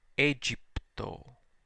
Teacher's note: The G is softened because it's followed by the vowel sound Y. But the AE, the diphthong that in restored pronunciation was I, is now pronounced E